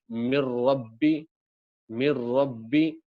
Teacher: نون ساکن را سے مل کر کے نون ساکن کی آواز ختم ہو گئی، اور را کی آواز مشدد ہو جائے گی. من ربی، من ربی. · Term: ادغام تام